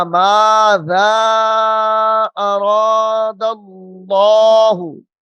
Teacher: ماذا کے آگے جو الف کے اوپر مد ہے، دوسری مدات سے اس کو تھوڑا کھینچ کر پڑھنا ہے